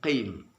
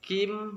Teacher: Huruf kaf itu k, memakai huruf k kalau dalam bahasa Indonesia, tapi kalau huruf qaf lebih dekatnya kita memakai huruf q, lebih ke dalam daripada kaf